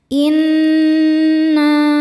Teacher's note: Karena nun bertasydid. Cara bacanya berdengung. Tahan dengungannya kurang lebih dua harakat